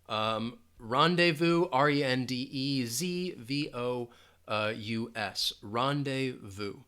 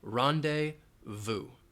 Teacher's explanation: So this is a French word. You're not going to hear that Z sound at all.